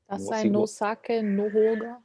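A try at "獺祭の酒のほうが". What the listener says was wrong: Yeah, good. Yeah, you could exactly do this.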